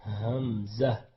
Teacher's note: حمزہ ہے, یہ اقصی حلق ہے, گلے کا آخر ہے, کیونکہ اس کا کنیکشن سینے سے ہے تو ہم اس کو سینے سے پڑھیں گے باری آواز کر کے. اس کو تھوڑا بولڈ کرتے ہیں, حمزہ.